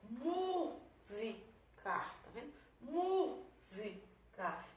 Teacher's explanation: Então a sílaba tônica é a antepenúltima, e eu teria um exemplo de proparoxítona.